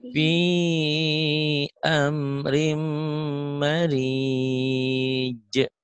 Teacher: Fi amrim, rimnya yang ditahan ya. Idgomiguna.